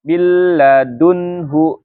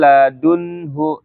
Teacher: dengan huruf lam sama ro setelahnya tidak diertai dengan guna tapi nunnya melebur ke huruf lam atau ro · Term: tanpa gunah